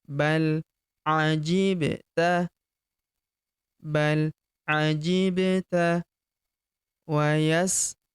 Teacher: huruf ba berharakat sukun kita pantulkan atau kita qalqalahkan